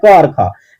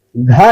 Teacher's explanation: है कि मुंह में जो है काफी तेज घर्षण होती है घ कहते हैं तो घर्षण के साथ यहां पर ध्वनि निकलती है मतलब इसको घोस कर बोला जाता है